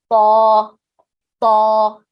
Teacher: So the way the sound comes is the frontal part of the tongue is completely attached to the frontal part of the upper palate. And when you remove the tongue, you kind of remove it with force, And your entire tongue, if you see from the side, is like this, like going toward the roof of the mouth. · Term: heavy